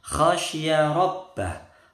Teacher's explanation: kha-nya kotor, khasya, shin-nya tebal, rabbah, ba-nya bertasydid